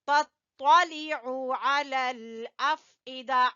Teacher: عین کو وسط حلق سے · تو کو پر پڑھیں گے